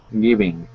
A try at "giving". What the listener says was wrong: Mm-hmm. Much better.